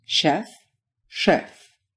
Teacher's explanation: you can take the rounded tongue position of the English's sh and flatten it out